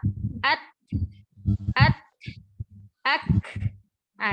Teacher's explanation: Solusinya dengan memberikan sifat hams di kaf dan kita membacanya ada suara nafas yang terhembus ketika setelah mensyidahkannya.